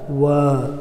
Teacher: ಇನ್ನು ದಂತೌಷ್ಠ್ಯ ಅಕ್ಷರಗಳು, ದಂತ ಮತ್ತು ಓಷ್ಠ್ಯದ ಸಹಾಯದಿಂದ ಉಚ್ಚರಿಸಲ್ಪಡುವಂಥ ಅಕ್ಷರಗಳು ದಂತೌಷ್ಠ್ಯ ಅಕ್ಷರ